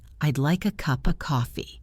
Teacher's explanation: Cup links to become cuppa. And of is pronounced with a schwa, so it is just cuppa.